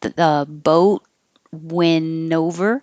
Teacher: I'm not going to say the T. I'm going to hold my tongue in the T position.